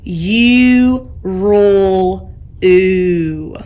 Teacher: instead of the whole sound U, it can make just the oo sound